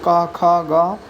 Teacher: उच्चारण स्थान कंठ जो कंठ से बोला जाता है